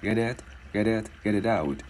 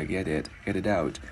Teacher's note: Và mình sẽ luyến cái chữ T này vào cái chữ Y thành chữ D tiếng Việt nhẹ nha.